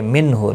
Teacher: نون ساکن کے بعد ہا آیا ہے، ہلکی، اظہار ہلکی ہوگا، غنہ نہیں ہوگا۔